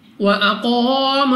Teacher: قاف مستعلیہ میں سے ہے، موٹا پڑھیں گے۔